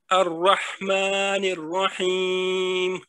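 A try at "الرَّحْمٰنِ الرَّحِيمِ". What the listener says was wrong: اور یہ جو مد عارض ہے نا تھوڑا سا کوشش کرنی ہے اور زیادہ کھینچے کیونکہ یہ آپ نے 2 سے 3 حرکت تو کی ہیں لیکن 4-5 حرکت تک نہیں ہوا.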